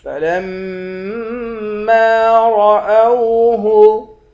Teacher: لام کو میم مشدد کے ساتھ ملا کر ایک الف کے مقدار کھینچیں گے بھی اور غنہ بھی کریں گے، را کو موٹا پڑھیں گے۔